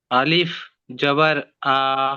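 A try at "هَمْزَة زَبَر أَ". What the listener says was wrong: আলিফ পড়তে আমি বারণ করেছি, যে আলিফের উপরে যখন মানে হারাকাত চলে আসে তখন কিন্তু আলিফ আর আলিফ থাকে না, হামজা হয়ে যায়।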